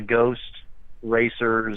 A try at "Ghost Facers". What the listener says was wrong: Facer Ghost Facer with an F. Ghost Facers.